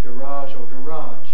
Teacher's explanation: the second syllable i'm stressed green line at the bottom is final stress as in american english